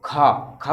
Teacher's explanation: का बिल्कुल आसानी से बोल रहा है, कम वायु, इसमें महाप्राण देखियो, खा खा बोलेंगे तो एक घर्षण भी लग रहा है और थोड़ी वायु भी एक साथ ज्यादा आ रही है ना